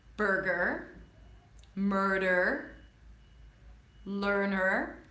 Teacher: these are the sounds where the vowel is not important and it's eaten up by the R.